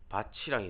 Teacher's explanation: 바티랑이 되는 거죠, 사실. 근데 이 티귿과 이가 만났으니까 바치랑이 되는 거죠.